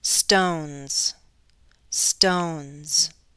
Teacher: N, n, n, n is a voiced sound. So when I take N and I add that plural ending, stones, stones, my plural ending is going to sound like a Z.